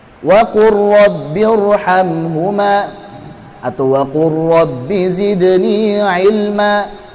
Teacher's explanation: Lam sukun qara, diidghamkan karena makhrajnya berdekatan. Mutaqaribain artinya berdekatan, makhrajnya berdekatan.